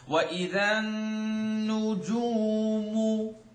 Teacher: the tongue makes a commitment to the sound and it vibrates in the nose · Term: noon shadda